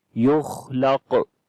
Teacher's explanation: On the qaf we read again heavy sound and we make qalqala.